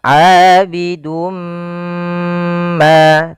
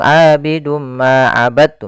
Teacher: kita masukkan tanwinnya kepada huruf mim kemudian ditahan. Abidum ma tahan ma baru dilepas. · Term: idgam bighunah